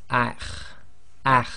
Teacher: The next one is the letter kha, and it's one of the tafkhim letters, and you've got that slight grinding in the throat